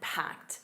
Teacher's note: notice that packed, a soft t at the end